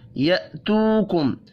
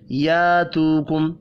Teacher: اب یہاں پر حمزہ ہے، الف نہیں پڑھیں گے، الف پڑھیں گے تو یہ کھینچ کر پڑھا جائے گا یاتوکم، جو کہ غلط ہے.